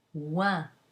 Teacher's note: OI is pronounced wa, as in toi. If the OI is followed by an N, then you get a nasal, ouin, as in loin. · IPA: [wɛ̃]